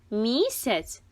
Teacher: в слові місяць звук м звучить м'яко